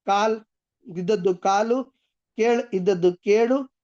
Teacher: ಹಳೆಗನ್ನಡದ ವ್ಯಂಜನಾಂತ ಶಬ್ದಗಳು ಹೊಸಗನ್ನಡದಲ್ಲಿ ಸ್ವರಾಂತವಾಗಿ ಬದಲಾವಣೆ ಆಗತಕಂತದ್ದು